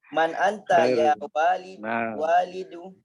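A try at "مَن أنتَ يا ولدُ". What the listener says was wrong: Kalau bacanya walid itu wawunya panjang. Kalau wawunya pendek bacanya walad. Walad itu anak, ya. Nah, ini wawunya kan pendek itu.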